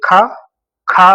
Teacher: हवा तेज तो ये आपका महाप्राण होता है